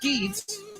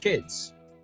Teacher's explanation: Es un sonido vocal cortito y no es una I latina, sino más como una E.